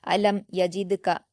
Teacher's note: میم پر جزم ہے اور اس کے بعد یا ہے تو یہاں اظہار شفوی کا قاعدہ ہے، بنا غنہ کے میم ساکن کی آواز کو جلد پڑھیں گے